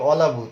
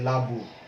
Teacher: শুরুতে যে একটি স্বরে অ ছিল, এই অ কিন্তু শুরুতেই লুপ্ত হয়ে গেছে, এটা হলো আদি স্বরলোপ